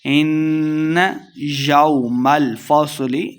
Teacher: ان نون مشددہ غنہ کریں گے۔ ان یوم الفصل، یو کو لمع نہیں کریں گے۔